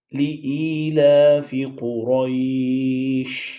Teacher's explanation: حمزہ کے بعد یا ساکن، اس وجہ سے تھوڑا سا اسے لمبا کریں گے، اور اسی طرح لام پہ کھڑی زبر ہے اس کو بھی لمبا کیا جائے گا۔